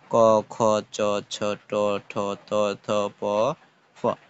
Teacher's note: তারপর যেগুলো অঘোষ ধ্বনি অঘোষ ধ্বনিগুলো কিন্তু কম কাঁপবে মানে হচ্ছে কিছু ধ্বনি উচ্চারণের সময় ধ্বনি কম কাঁপবে সেগুলোকে অঘোষ ধ্বনি বলে